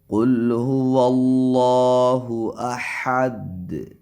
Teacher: احد حمزہ کو تحقیق کے ساتھ پڑھیں اور دال پہ قلقلہ کریں